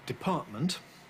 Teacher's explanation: I was there using a glottal stop before the M I didn't say Department but as most people normally do Department